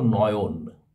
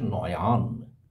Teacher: অতিরিক্ত স্বরধ্বনির আগম ঘটলে তাকে মধ্যস্ম বলে যেমন দেখো নয়ন এখানে একটা অতিরিক্ত স্বরধ্বনি আ এসে উচ্চারণ হয়ে যাচ্ছে নয়ান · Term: মধ্য সরাগম